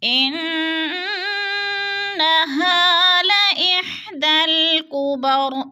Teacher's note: ہا باریک ہے، حلق سے نکالنا ہے · انہ کی نون مشدد ہے، غنہ کریں گے، ناک میں آواز لے جائیں گے، سختی سے جمع کر پڑھیں گے۔ · ہا پہ الف مدہ ہو رہا ہے، الف مدہ کو پھر ہم نے کھینچ کر پڑھنا ہے، ایک الف دو حرکات کے برابر